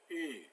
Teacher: It's like oo, but your tongue is up front, closer, u. And so we have words like fu and pu, which are different than fu and poo.